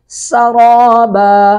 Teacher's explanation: سین پر سیٹی کی آواز آئے گی